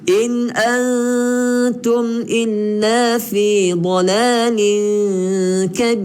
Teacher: Nun yang bertanda sukun, maka dia tidak dengung. Di sini izhar halqi.